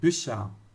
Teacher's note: depois de qualquer vogal com trema, o CH ele vai ter barulho chiadinho, como se fosse da palavra ich, tá?